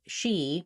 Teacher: So when I'm saying /i/, I want to make sure I really have a nice tense high tongue.